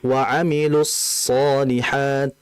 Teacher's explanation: Karena shad ini kan punya sifat sofir. Sehingga sofir ini harus dijelaskan.